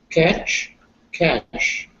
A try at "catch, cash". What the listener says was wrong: Well done.